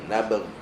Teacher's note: Ghain dekat permulaan kerongkong, dan permulaan kerongkong ni adalah tempat keluar masuk angin. Dia mesti ada getaran angin.